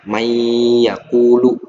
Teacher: Jadi seakan-akan nunnya itu disamarkan may. Nah, nunnya tidak dibaca, disamarkan sebenarnya ya. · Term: idgham bigunah